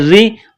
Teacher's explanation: خا خا زیر خی را زیر ری، را کے نیچے زیر ہے تو را کو باریک کرنا ہے